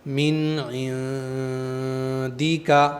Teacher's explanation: number 3، جلدی پڑھیں گے، نون پر بہت دیر تک رکے نہیں رہنا ہے، نون کو فوراً پڑھ کے عین کو پڑھ دینا ہے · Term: اظہار